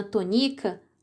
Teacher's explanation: No nome de Dona Tonica, a sílaba tônica é ni, e na palavra que eu disse, a sílaba tônica é o tó.